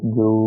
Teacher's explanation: واؤ ساکن سے پہلے لفظ کے اوپر پیش ہے تو یہ حروف مدہ کہلائے گا اور اسے کھینچ کے ادا کریں گے